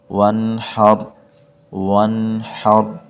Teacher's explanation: کو وہ سینے سے نکال دیتے ہیں، تو یہ غلط ہے، ہم اس ہا کو گلے سے نکالیں گے تبھی ٹھیک ہوگا · اکثر حضرات یہاں پہ نون پر قلقلہ کر دیتے ہیں، اس نون پر قلقلہ نہیں کرنا